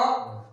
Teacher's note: जो स्वर की जो शुरुआत होती है अ, बोलिए आप लोग अ, तो अ कहां से निकलेगा, बीच में, जीभ के बीच से निकलता है